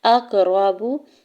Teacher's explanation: واو ساکن سے پہلے فا کے اوپر پیش ہے اور واو ساکن کے اوپر مد منفصل بھی ہے، تو 4 سے 5 حرکت کھینچ کے ادا کرنا ہے مد کو۔ اقربوا، حمزہ کے زبر کو قاف ساکن کے ساتھ ملاتے ہوئے قاف ساکن پہ کلکلا کریں گے، را کے زبر کو جلدی سے ادا کریں گے اور با کی پیش کو بھی بغیر کھینچے ہوئے ادا کرنا ہے۔